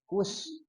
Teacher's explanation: huruf shad itu dia ada di ujung lidah. Posisinya antara gigi seri atas dan gigi seri bawah gitu ya. Nah, tapi lebih dekat ke bawah. Dan shad ini punya sifat saofir, Ibu-ibu, ya.